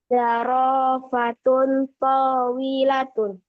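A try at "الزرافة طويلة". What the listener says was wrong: Ada alif lamnya di zarofatun. Berarti az-zarofatu tawilatun.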